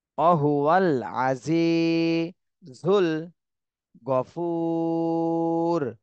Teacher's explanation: হুতে তিন আলিফ টান দিতে হবে আর রর উপরে জজম দিতে হবে